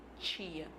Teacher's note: Esse T, na verdade, ele está assimilando o traço palatal do I, porque o I é uma vogal anterior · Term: assimilação